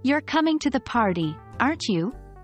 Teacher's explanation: speaker is pretty sure the person is coming to the party the question tag with falling intonation is just seeking confirmation